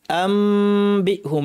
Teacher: যেন শক্ত হয় আম্বিহুম নুন বা আসলে ইকলাব করতে হবে অর্থাৎ নুন কে পরিবর্তন করে মিম বানিয়ে পড়তে হবে আবার মিমের গুন্নাটা লম্বা করে দিতে হবে আম্বি আম্বি বলার সময় দুই ঠোঁট লাগবে কিন্তু বেশি চাপ দিব